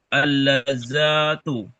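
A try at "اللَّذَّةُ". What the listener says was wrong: za-nya nggak panjang. Lamnya baru betul itu di tasdid. Tapi za-nya nggak panjang.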